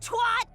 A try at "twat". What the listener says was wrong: I hate the way Americans pronounce twat. It's an A.